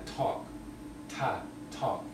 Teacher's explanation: It's sort of aspirated, as in talk.